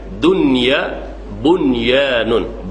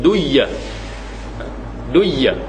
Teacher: zahirkan bunyi nun mati itu tanpa ada idgham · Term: izhar